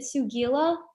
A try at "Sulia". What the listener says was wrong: It's Sulia. The G is silent, like lasagna.